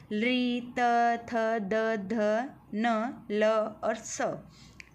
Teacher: ऋतु लसा दंत्या ली त तु अर्थात तो वर्ग, ल और स, इनका उच्चारण क्या है? दंत्य है, दांत से होते हैं